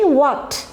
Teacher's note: দেখো এখানে একজন পুরুষ লোকের জন্য কথাটা বলা আছে, হোয়াট ক্যান, হোয়াট, দেখো উচ্চারণ যখন আমি হোয়াট বলছি তখন কিন্তু আমি হোয়াট বলছি না, কি বলছি, হোয়াট। হ উচ্চারণটা সাইলেন্ট হয়ে যাচ্ছে